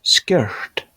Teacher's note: With the devoicing R